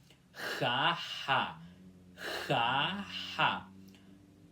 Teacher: a garganta forçada e depois aspiração suave